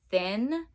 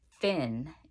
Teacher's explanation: a common challenge is the th sound and it being substituted with a f sound